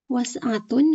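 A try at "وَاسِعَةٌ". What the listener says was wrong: Ayo, ada alifnya. Wasi'ah.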